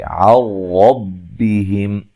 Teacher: نون ساکن کا ادغام ہے لیکن بلا غنہ ہے ، غنہ نہیں کریں گے، را کو موٹا ادا کریں گے،